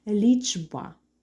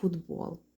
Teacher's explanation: глухі що стоять перед дзвінкими стають теж дзвінкими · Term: уподібнення